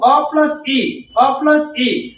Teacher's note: संयुक्त स्वर बोला जाता है संयुक्त स्वर इसलिए इसका उच्चारण स्थान संयुक्त रूप से होगा कंठ और तालू अ प्लस इ अ प्लस इ अ कंठ से होता है